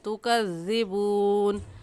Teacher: ایسے پڑھیں گے کنتم بہ تکذبون۔ تا کو ہم موٹا کر کے نہیں پڑھیں گے، تا کی جگہ توا پڑھنا غلط ہے اور صحیح ہے تکذبون۔